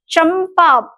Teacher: चंपा कहते समय चंपा मैं म का उच्चारण न किए बगैर मैं आगे नहीं बढ़ सकती